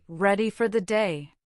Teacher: ready for the day has a brighter rising energy. This shows enthusiasm.